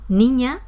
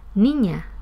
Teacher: Por ejemplo, cuando yo aspiro la S de niña, la vocal A que queda en posición final se hace un poco más abierta o un poco más larga. De manera que es totalmente distinto mi pronunciación niña y mi pronunciación niña. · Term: aspiración de la S implosiva